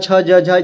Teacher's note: च वर्ग का उच्चारण स्थान कहां है दोस्तों? तो तालु है।